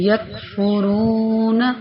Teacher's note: کاف کی آواز باریک اور بغیر جھٹکے والی